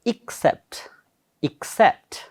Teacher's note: with the stress, second syllable